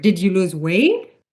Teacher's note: So the pitch goes up at the last word.